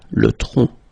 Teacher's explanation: Le tronc, okay, remember, final C is not pronounced here